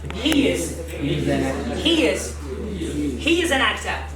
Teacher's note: The word he ends with a vowel sound for which your lips position is spread.